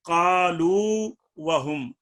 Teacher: اس قالو کی واو کا اور وہم کی واو کا ادغام نہیں ہوگا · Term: اظہار